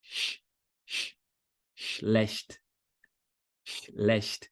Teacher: Para não correr o risco de você querer colocar um I, fazer ish, ish. Não tem som vocálico aí, é só chiado · Cuidado para não colocar uma vogal I antes e fazer assim, ó, ish, não é ish, começa só com chiado. De preferência, já fecha os dentes aqui, ó.